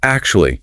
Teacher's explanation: The stress is heavily on the first syllable. But to create the velvet effect, you must elongate that first vowel sound. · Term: Elongate the vowel